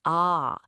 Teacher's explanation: stretching out into a nice long ah sound, like in father